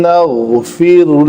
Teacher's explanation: غین کو قلقلہ نہیں ہونے دینا اور پر پڑھنا ہے